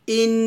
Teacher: এখানে ইন গুন্না করবেন এটা হচ্ছে ওয়াজিব গুন্না